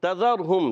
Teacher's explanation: تا کا مخرج ہے زبان کا سرا اوپر کے دانتوں کی جڑوں سے. تا دال تو حرف نطعیہ ادا ہوتے ہیں.